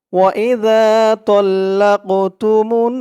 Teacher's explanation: এই যে দেখুন, মিম দিয়ে নুন ধরবে বলছিলাম, এই যে তাসদিদ ওলা নুন, মিম নুন পেশ মুন, নুন জেরেনি মুন্নি, মুন বলে আবার গুন্নাহ করতে হবে, ওয়াজিব গুন্নাহ।